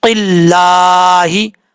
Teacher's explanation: قاف حروف مستعلیہ میں سے پر پڑھا جائے گا